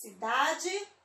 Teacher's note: Eu demorei mais no da. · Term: sílaba tônica